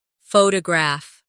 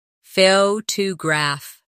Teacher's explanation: The stress is on the first syllable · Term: word stress